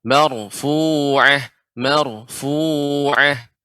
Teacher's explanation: ra yang sukun sebelumnya fathah. Ini kaidah yang sudah kita pelajari, maka dibaca tebal.